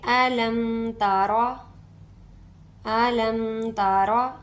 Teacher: आलम ऐसे नहीं बोलेंगे, ना अलिफ को खींचेंगे ना मीम पर ज़्यादा देर रुकेंगे